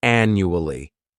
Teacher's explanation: The second syllable, it's like you're just saying that letter U. And the third syllable has that schwah